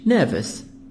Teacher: The word nervous, American, but the British nervous. In British, we make the R silent, but in American, nervous.